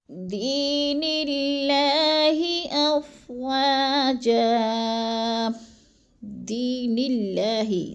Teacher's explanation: دی کو بھی ہم نے تھوڑا سا لمبا کر جانا ہے، کیونکہ ادھر یا مدہ ہے، یا ساکن سے پہلے دال کے نیچے زیر ہے تو یا مدہ، نِلّہ کی اللہ باریک پڑھی جائے گی۔